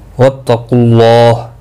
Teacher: اللہ کا لام پر پڑا جائے گا پیش کی وجہ سے